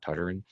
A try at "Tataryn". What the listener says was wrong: Tataryn. There's no R in the first TA.